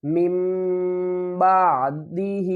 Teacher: ثم اتخذتم العجل، ثم اتخذتم العجل من بعده، یہاں پر اقلاب کا قاعدہ ہے، جب بھی نون ساکن اور تنوین کے بعد اگر با آ جائے تو ہم تنوین اور نون کی آواز کو میم کی آواز میں بدل کر پڑھیں گے